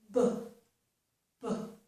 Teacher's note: And to make the sound, I open my lips and push out the air. There's like a burst of air and sound.